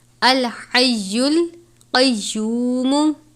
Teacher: اس ہا کو کہتے ہیں باریک والی ہا، حلق سے ادا کرتے ہیں یعنی باریک پڑھتے ہیں